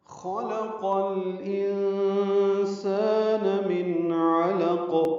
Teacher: لام ساکن پہ اظہار قمری ہے، انسان میں نون ساکن کی بعد سین آنے کی وجہ سے اخفا ہے، نون کی آواز چھپائیں گے، سالف مدہ ہے، دو حرکات لمبا کریں گے. · من علق میں نون ساکن کی بعد عین آنے کی وجہ سے اظہار ہے، اظہار حلقی، عین وسط حلق سے ادا کریں گے. لام کو قاف سے ملا دیں گے، وقفاً من علق، قاف ساکن پہ قلقلہ ہوگا.